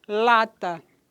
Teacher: né Eh da do trato da língua e o som ele sai pela pelas laterais por isso que é lateral a classificação é lateral ao alveolar porque eh o ápice da · a classificação é lateral, alveolar, porque o ápice da língua que toca nos alvéolos, e é vozeado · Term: lateral, alveolar, vozeado